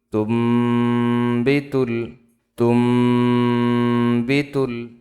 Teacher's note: তামিম পেশ তুম, এখানে তার পেশ দিয়ে মিমকে ধরতে হবে। এখানে ইকলাব হইছে, গুন্নার সাথে মিম পড়তে হবে।